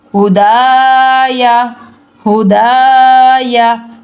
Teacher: دال کے ساتھ خالی الف ہے تو اس لیے دال کو لمبا کرنا ہے